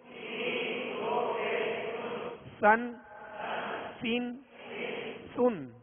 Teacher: اس کو باریک پڑھیں گے اور سیٹی کی آواز میں پڑھیں گے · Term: سین